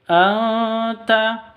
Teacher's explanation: Anta maulana fansurna 'alal qaumil kafirin. Anta, nun mati bertemu dengan ta, samar didengungkan